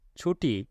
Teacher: ট বর্ণটি অঘোষ অল্পপ্রাণ